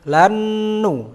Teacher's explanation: Ru matabi'ah juga, ra-nya tafkhim juga. Lannu, nun bertemu nun, idgham bi gunnah